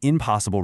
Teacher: Try saying impossible really fast right now. See, your lips naturally close to make an M sound. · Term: assimilation